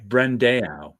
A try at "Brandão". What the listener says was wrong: Brandão. You're supposed to say the nasal thing.